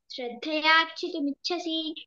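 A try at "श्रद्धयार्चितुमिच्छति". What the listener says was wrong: మిచ్చసి కాదు, మిచ్చతి తి, సి కాదు. అదొకటి.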